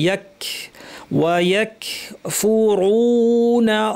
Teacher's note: ইয়া দেখতে গিয়ে ওয়াকে যেন লম্বা না করি। ওয়া ইয়াক কাফ সাকিন, এখানে একটু ছোট্ট বাতাস থাকবে।